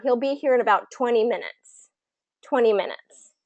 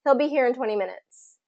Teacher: we emphasize that number because numbers are usually pretty key information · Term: emphasize numbers